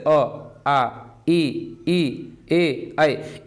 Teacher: इन सब का उच्चारण आप करेंगे तो आपका जो ओठ है वो गोलाकार नहीं होगा, गोल नहीं होगा। तो ऐसे ही जितने भी स्वर होते हैं ये आपके आवृत मुखी स्वर कहलाते हैं।